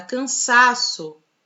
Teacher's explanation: Na palavra cansaço, a penúltima sílaba é a sílaba tônica.